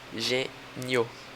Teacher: O I funciona como uma semivogal, o O como uma vogal. O tom cresce. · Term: ditongo crescente